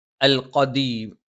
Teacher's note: ദ നാവിന്റെ അറ്റം മേലെ മുൻപല്ലിന്റെ മുരട്ടിലാണ്